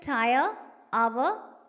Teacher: I, A and O are followed by the weak vowel a within a syllable in a word. In words like tire, hour, the closing diphthongs I and ow are followed by the weak vowel a. Here the final vowel a forms an inseparable part of the word. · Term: triphthong